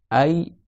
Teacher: c'est le fait que le milieu de la langue il est monté sur le palais · tu verras que le milieu de la langue il est monté vers le haut